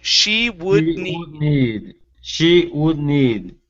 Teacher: do not finish the D sound. Okay, so you're going to pronounce half of the D. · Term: stop D